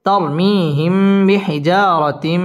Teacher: তানবিনের বামে মিম মিম ইদগামে বা গুন্নার হরফ গুন্না সহ মিলিয়ে পড়তে হবে